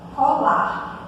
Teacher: Esse R aqui, ele não é pronunciado, né? Colar.